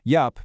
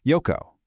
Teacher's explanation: that soft little P sound from your lips transforms into a much harder, clear co sound from your throat. Yep. Becomes yoko.